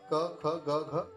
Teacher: उदाहरण के तौर पे क ख ग घ कंठस्थ है, कंठव्य है। कंठव्य मतलब इनकी ध्वनि कंठ से निकलती है।